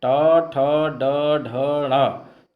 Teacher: ट, ठ, ड, ढ, ढ़ ये मूर्धा का स्पर्श करते हैं, इसलिए टा वर्ग के उच्चारण स्थान मूर्धा है।